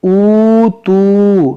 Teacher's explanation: واو ساکن سے پہلے پیش ہے, تو اس کو پڑھیں گے اوتو, تھوڑا کھینچ کھینچ کے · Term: واو مدہ